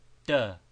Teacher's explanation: with tip of tongue placed on back of teeth instead of on front ridge of roof of mouth.